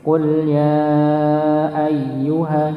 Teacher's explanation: ketika huruf ya di sini tasydid, maka jangan lupa untuk ditekan, dihentakkan